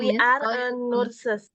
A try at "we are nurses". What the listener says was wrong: we are nurses ya enggak pakai e